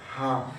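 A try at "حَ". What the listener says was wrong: হা একটু শক্ত করেন হা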